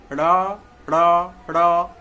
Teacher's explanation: जीभ ऊपर जाएगा, मूर्धा में सटेगा और नीचे आ जाएगा।